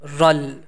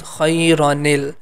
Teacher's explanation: We have to express the hidden noon, and then we are going to give it a kasra, then it becomes ni